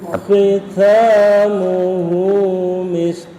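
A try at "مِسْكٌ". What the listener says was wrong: Hamesnya enggak lepas Ustaz.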